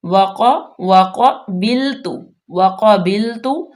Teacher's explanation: وقبلت، وقبلت، واو زبر وا، قاف زبر کا، قاف مستعلیہ میں سے ہے، پر پڑا جائے گا، با کے نیچے زیر ہے، لام باریک، تا بھی باریک، تا مضموم ہے۔